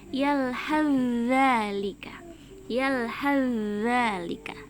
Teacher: Tapi karena huruf sa dengan zal ini sama tempat keluarnya, sama makhrajnya, maka cara membacanya begini, yalhazalika, yalhazalika, seperti itu. Jadi sa-nya langsung diidghamkan ke huruf zalnya